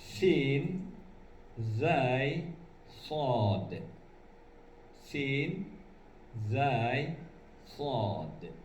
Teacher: ujung lidah bekerja sama dengan papan urat gigi bagian atas. Yang dimaksud dengan papan urat gigi bagian atas adalah bila ujung lidah diletakkan pangkal gigi, tarikan bagian ke dalam.